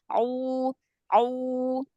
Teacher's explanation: Domahnya, huruf ain domahnya monyong lagi.